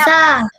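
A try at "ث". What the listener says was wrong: Bukan sa. Bukan macam tu. Okey. Sa. Keluar sikit je lidah.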